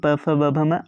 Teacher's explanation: देखिए प फ ब भ म आप जब बोलेंगे आप अपने मुख से बोलिए प फ ब भ म आपका दोनों आगे का ओठ आपस में सटा जा रहा है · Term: ओष्ठ